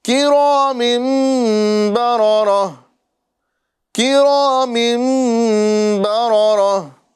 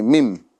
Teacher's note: پر جو ہے ہم تنوین کے اندر اقلاب کرتے ہیں، یعنی تنوین کو ادا کریں گے تو میم دو زیر من نہیں بولیں گے بلکہ مم بولیں گے